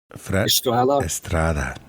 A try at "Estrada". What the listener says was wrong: No, you gotta roll that R, man.